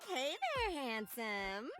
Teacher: This voice has lots of vocal fry